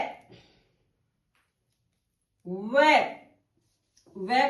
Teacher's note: इसका जो उच्चारण स्थान होता है वो दंतोष्ठ दांत और ओष्ठ